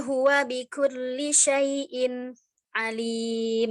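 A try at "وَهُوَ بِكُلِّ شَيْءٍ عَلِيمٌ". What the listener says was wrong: Nah, itu saktahnya itu bukan di syai'innya, syai'nya. Wa huwa bikulli syai'in alim. Bukan di innya, di syai'nya ya. syai'nya syai', jangan syai'in alim.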